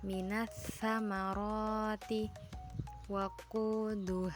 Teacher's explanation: Alif lam syamsiyah yaitu alif lam harus dibaca idgham yaitu dimasukkan ke huruf setelahnya apabila bertemu dengan 14 huruf hijaiyah berikut yaitu ta, tsa, dzal dza, roza sin, syin, sh, bo, tho, d, lam, nun. · huruf alif lam syamsiyah tidak terdengar lalu dilanjutkan ke huruf setelahnya karena dibaca idgam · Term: alif lam samsiah